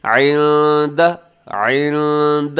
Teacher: عند نون ساکن کے بعد دال ہے تو یہاں اخفا کیجیے گا اس لفظ کے اندر